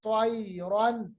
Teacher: تو کو موٹا پڑھتے ہیں، گولو کرتے ہیں موٹوں کو